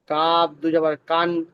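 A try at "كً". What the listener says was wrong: কাফ টান দরকার নাই। কাফ, কাফালিফ, কাফালিফ দুই জবর কান।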